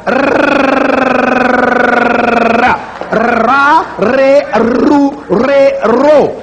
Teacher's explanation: apico-alveolar trill